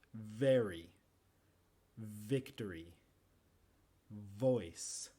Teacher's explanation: se hace con los labios el labio inferior y los dientes superiores ahí es sonoro donde muevo las cuerdas vocales · con los labios el labio inferior y los dientes superiores ahí es sonoro donde muevo las cuerdas vocales no como la f que es sorda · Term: la v